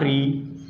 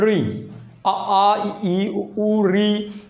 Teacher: जब री का उच्चारण करते हैं जो हमारी जीभ होती है, जीभ हमारी तो मुड़ जाती है। री का उच्चारण करते हैं जीभ हमारी मुड़ती है, मुड़ने के कारण ही, जीवा के मुड़ने के कारण ही इसे हम कहते हैं मूर्धा।